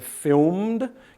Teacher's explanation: If this one was voiced, like for example in the word filmed, can you hear the m is the last phoneme in the base, the word film? Then the ed is pronounced d. D is voiced. So m is voiced, d is voiced.